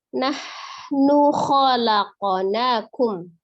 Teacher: ha dari tenggorokan bagian tengah, kemudian kho-nya dari tenggorokan bagian atas